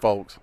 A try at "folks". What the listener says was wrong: I don't pronounce the L. Y'all are saying the L.